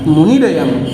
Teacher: विसर्ग के स्थान पर र हो जाएगा